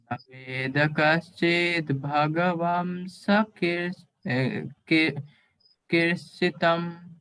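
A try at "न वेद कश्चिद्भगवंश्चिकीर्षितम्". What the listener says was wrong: Chikirshitam. That's little cha and then ka.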